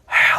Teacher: ہا آپ کے حلق سے ادا ہوتا ہے، یہ ایک ٹھنڈی آواز ہے، اسے سینے سے گول ہا کی طرح ادا نہیں کرنا بلکہ حلق سے ہا ادا کرنا ہے۔